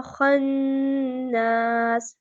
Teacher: نون مشدد ہے، غنہ کریں گے، خا نون زبر خن، نون الف زبر نا، خنا۔